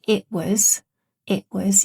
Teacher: You can hear the glottal stop here. It was. That's considered completely standard because the T comes before a consonant sound, w.